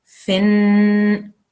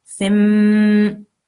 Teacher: So in normal circumstances, you would say fin, but because there is this little meme here, you will then say fim. Okay, and you push the dry parts of your lips together to make that meme sound and make it a stronger sound. So fim.